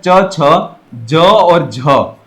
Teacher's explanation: स्पर्श संघर्षी के अंतर्गत च, छ, ज और झ। यह जो चार वर्ण है वह स्पर्श संघर्षी के अंतर्गत आते हैं।